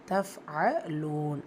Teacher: ஃபா சுகூன் ஹம்ஸரை சட்டம் காற்றை வெளிப்படுத்தி உச்சரிக்கணும்